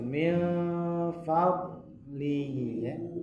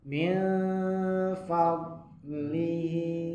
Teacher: Sifatnya sudah tepat karena itbaq dengan istitalah ya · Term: huruf dot